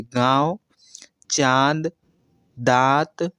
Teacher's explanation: नाक से कम मुख से ज़्यादा वायु बाहर निकलती है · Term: अनुनासिक